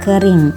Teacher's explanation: vokal I, tinggi bawah depan tak bundar pada kata kering